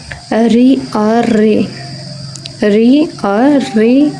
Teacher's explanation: ऋ और ऋ का उच्चारण स्थान मूर्धा है